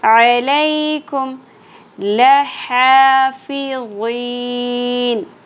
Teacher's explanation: لام کی زبر شارٹ رہے گی، کھڑی زبر ایک الف کے برابر. فا زیر فی.